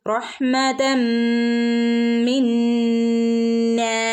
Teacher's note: തൻവീനിന് ശേഷം മീം വന്നാൽ മണിച്ചു കൂട്ടിച്ചേർത്ത് ഓതണം